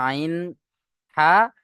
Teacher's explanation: কণ্ঠনালীর মাঝখান থেকে উচ্চারণ হয় আইন হা